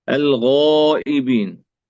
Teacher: فالغين هنا تفخم وتعطى التفخيم المناسب لها.